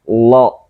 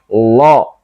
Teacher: Bagaimana cara membunyikan huruf lam tebal itu tanpa bibir monyong, tetapi bunyinya kok seperti o